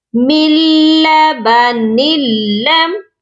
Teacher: ساکن لیٹر کو چھوڑ دیا اور میم کو لام مشدد کے ساتھ ملایا۔ یہاں پر یہی مسٹیک کرتے ہیں اور بہت سے لوگوں کی غلطی یہی ہو جاتی ہے کہ من لبا نون کو بھی پڑھ دیتے ہیں، یہاں نون کو ہم نہیں پڑھیں گے، من لبن لم۔ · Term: ادغام بلا غنہ